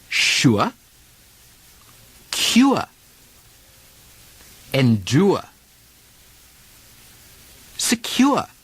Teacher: The R drop from the oor sound leaves the diphthong oor